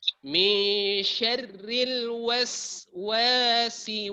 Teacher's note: Jangan diqalqalakan sin. Itu bukan qalqalah. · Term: sin sukun